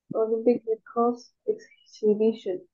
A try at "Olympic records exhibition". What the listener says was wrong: Mình đọc là records nha, không phải là record nha. Về records.